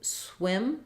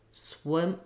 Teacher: When I do swim, what you might be perceiving is that I have to go from an unrounded shape for the S to a rounded shape for the W.